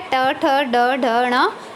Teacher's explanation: मूर्धन्य व्यंजन की बात करें तो कठोर तालु के मध्य का जो भाग है वो मूर्धा कहलाता है। जब जिह्वा की उल्टी हुई नोक का निचला भाग मूर्धा से स्पर्श करता है तो ऐसी स्थिति में उत्पन्न ध्वनि को मूर्धन्य व्यंजन कहते हैं।